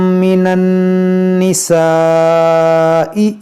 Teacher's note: नून मुशद्दद है, इसमें गुन्ना करेंगे